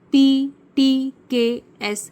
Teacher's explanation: P, T, K, S, it's simple voiceless where there is no vibration in vocal cord